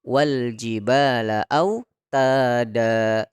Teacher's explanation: detika ada Fatah dua di atas disebut dengan Made Iwa get mad iwad ini banyaknya Hanya dua harokat Maka jangan kita lebihkan dari dua